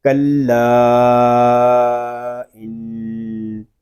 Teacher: حمزہ نون زیر ان، نون مشدد ہے، اس کو غنے کے ساتھ پڑھیں گے کیونکہ نون مشدد میں ہمیشہ غنہ ہوتا ہے۔ اس کو پڑھیں گے کلا ان، اس کو ان نہیں پڑھیں گے۔